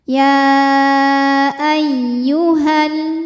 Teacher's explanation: sukun bertemu sukun tidak bisa dibaca sehingga sukun pertama dilepaskan ketika wasal Jadi h-nya pendek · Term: pertemuan dua sukun